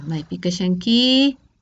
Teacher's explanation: Alargamiento final de la I, dice. Maipi kashanki.